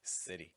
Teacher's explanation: Once you get T sounds in the middle or at the end, though, things shift. Vowel plus T plus vowel makes a flap T fast D sound, like in city.